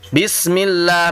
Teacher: Bismillahi fauqal lam. Yang pertama adalah di lafaz basmalah, bismillah di atas lam. Maka lamnya harus digandakan. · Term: tasydid